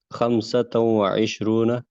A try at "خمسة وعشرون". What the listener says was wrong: تو لگائیں کیونکہ آپ کو واو سے ملانا ہے نا، 2 پیش لگانے پڑیں گے. تو خمسۃ وعشرون.